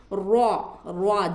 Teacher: र पढ़ते वक्त में हमारा मुंह है ना अंदर फैले यानी कि मोटा होगा र र जब हम पढ़ते हैं तो मुंह मोटा होगा हमारा · जबान की नोक की पीठ को ऊपर के दांतों के मसोड़ा से र निकलता है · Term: र मोटा